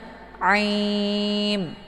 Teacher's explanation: Untuk aim ini dibaca panjang boleh 2, 4 sampai 6 harokat atau 6 kali ketukan. Ini dinamakan dengan mad arid lisukun.